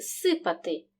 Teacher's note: префікс з перед глухим приголосним вимовляємо як с тобто він оглушується